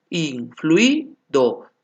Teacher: UI. Son dos vocales cerradas, por lo tanto son homogéneos.